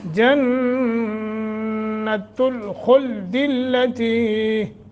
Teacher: جنہ نون مشدد ہے، غنہ کریں گے ، خا کو موٹا کریں گے، التی تی حروف مدہ ہے،